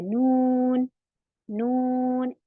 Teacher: हमारी नाक में को आवाज निकल कर आ रही है नून नून, इसका कनेक्शन नाक से है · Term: गुन्ना